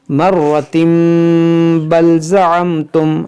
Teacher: اگر ملا کر پڑھیں گے تو پھر تنوین کے بعد حرف با ہے تو یہاں پر اقلاب ہوگا، یعنی اس میم کو جو ہے پڑھیں گے، ہم اس کو پڑھیں گے مرتم بل زعمتم، ایسے پڑھیں گے.